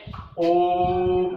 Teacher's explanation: तो ये ओम ऐसा लंबा जो खींचा जाता है शब्दों को, ओम, तो ये शब्द क्या है, प्लूत कहलाएगा। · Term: प्लूत स्वर